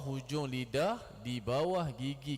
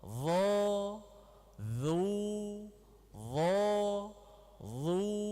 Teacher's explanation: za nipis kan tapi zho tebal tempat sama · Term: huruf tebal